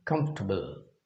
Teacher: but actually by native speakers this is pronounced as a disyllabic word, comfortable. Comfortable, with stress on K.